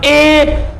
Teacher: ए बोल के देखिए आप, ए, तो जीव के अगले वाले हिस्से पर जोर लग रहा। जीभ के अगले वाले हिस्से पर जोर पड़ रहा, बाकी अदरवाइज कोई प्रभाव नहीं पड़ रहा, तो इसलिए ही अग्र स्वर बोलते हैं।